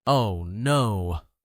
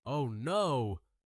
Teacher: stretches it out with her voice, giving it a dramatic and emotional sound